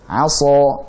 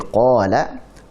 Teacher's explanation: Jadi sa lebih tebal daripada qa.